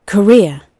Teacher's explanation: in British pronunciation, the word career alone will have the R sound, but if it's put in a sentence, they might drop that R sound.